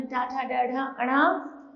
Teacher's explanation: आगे है टाव, टाव में टा ठा डा ढा अणा, उच्चारण स्थान है मूर्ध्य और नाम है मूर्धन्य।